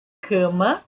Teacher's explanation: o mesmo CA de cama, ele é fechado e tem o casa, tá?